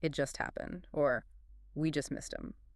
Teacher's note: The spoken emphasis on just is what carries that feeling of urgency and recency.